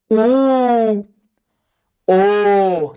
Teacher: तो जीभ पीछे जा रहा है